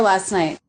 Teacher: often when the next sound is another consonant the ending T in a consonant cluster will be dropped